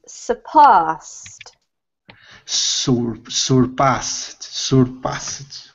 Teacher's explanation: So the emphasis is on the pass, and then this is a T sounding ending